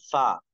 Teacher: ऊपर के दांत और नीचे के होठ का अंदर वाला तर वाला हिस्सा जब मिलता है तो अदा होता है · फा की अदायगी के वक्त हल्की सी हवा अंदर से बाहर की तरफ आती है